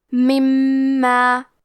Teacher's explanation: کلمت من کے آخری میں نون ساکن ہے، پھر حرف المیم ہے کلمت ما، یہاں بھی حکم ہے ادغام بغنہ، تو ہم نون ساکن کو میم میں ملا کے غنہ اور تشدید کے ساتھ یہ حکم کو ادا کریں گے